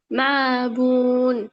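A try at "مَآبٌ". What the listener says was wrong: এখানে মিমের মধ্যে হবে না হামজার মধ্যে হবে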